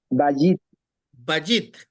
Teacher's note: Bajit, acento en la penúltima sílaba. Si usted ve, tiene un guioncito arriba de la bet.